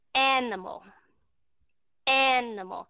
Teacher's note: Thì chúng ta sẽ nghe cái chữ an, âm an ở trong này đó. Cái stress nó nằm ở đó, primary stress nó nằm ở trong đó.